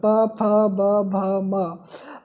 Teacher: प, फ, ब, भ, म का उच्चारण ओष्ठ के सहारे होता है, ओठों के सहारे होता है, इस वजह से इसका उच्चारण स्थान ओष्ठ होता है।